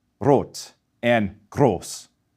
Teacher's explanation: we do not roll it. So, it's not rot and gross. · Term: tip of the tongue R